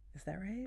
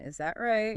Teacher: Try to copy my soft rising tone. · The voice goes up. Gently up.